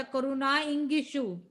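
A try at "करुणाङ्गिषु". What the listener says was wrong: ई नहीं है, अंग है, करुणांग ऐसा, उसमें एक ही मात्रा।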